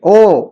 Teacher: कंठ ओष्ठ से आवाज आएगी